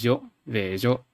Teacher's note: you don't hear the affricate quality, it's just a fricative